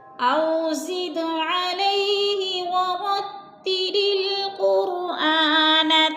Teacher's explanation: زد پہ قلقلہ ہو رہا ہے، دال ساکن ہے اور حروف قلقلہ میں سے ہے تو اس کو ہلا کر پڑھیں گے